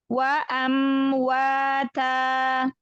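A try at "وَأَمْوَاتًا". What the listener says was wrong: Wa dorong lagi wa fathahnya.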